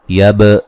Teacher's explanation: با کو قلقلے کے ساتھ پڑھیں گے